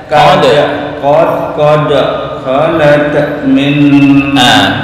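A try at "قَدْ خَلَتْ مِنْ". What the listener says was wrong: Tak, jangan kol-kolah, bukan kholat, enggak. Kholat. Nah, sukun dulu baru hamas muncul. Nafasnya muncul. Kholat min. Kholat. Kholat min.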